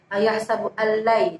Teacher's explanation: Ayahsabu allai, di situ ada nun sukun bertemu dengan lam yang artinya itu adalah bacaan idgham bila gunnah. Cara membacanya dimasukkan tanpa berdengung. Kemudian ada layyaq, nun sukun bertemu ya, itu disebut bacaan idgham bi gunnah.